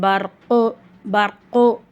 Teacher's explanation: சுக்குன் பெற்ற ராக்கு முன்னாடி ஜபர் வருது அப்ப அந்த ராவ நம்ம வல்லினமா ஓதணும்